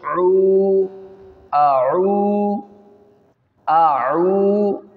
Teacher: اور آگے دیکھیں واو ہے، واو کے اوپر چھوٹی سی دال کی علامت ہے، یہاں واو ساکن سے پہلے پیش آ رہی، واو مدہ ہوگا، ایک الف ہم اس کو کھینچیں گے